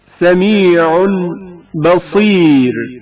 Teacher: تنوین بھی با سے پہلے میم میں بدل جاتی ہے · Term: اقلاب